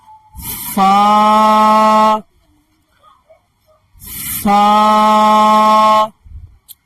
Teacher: आप सनाया उल्या के किनारे को नीचे वाले होठ के तरी वाले हिस्से में जरा सा टच कीजिए, फिर हवा निकालिए